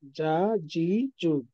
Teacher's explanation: 6 নম্বর মাখরাজ, জিহ্বার মধ্যখান তার বরাবর উপরে তালুর সঙ্গে লাগায় উচ্চারিত হয়। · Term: জিম